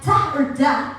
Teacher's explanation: Alveolar sound, like ta or da, is substituted with a velar sound.